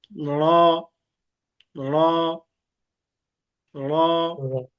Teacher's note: র কে উচ্চারণ করতে হবে আমাদের যে জিহ্বার আগা আছে, এই আগার উল্টা পিঠ। জিহ্বার আগা, তার উল্টা পিঠ উপরে তালুর সঙ্গে একটু লেগে উচ্চারণ করতে হবে।